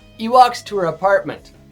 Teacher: I'm not trying to fake the British accent, but I said it without the H. · In Canadian and American English, we often say the H on he or her at the beginning of a sentence. But in British English, some dialects or some accents, they don't say that he. He becomes e.